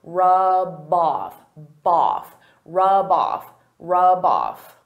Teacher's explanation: Because rub off is a phrasal verb, they go together. I can take that B sound and connect it to the next word